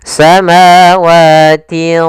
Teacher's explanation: karena huruf tha huruf tebal, huruf isti dan huruf idbaq, maka ikhfanya juga ditebalkan. samawatin. Nah, langsung seakan-akan kita melafalkan huruf th, tapi tinya tetap tipis. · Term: bacaan ikhfa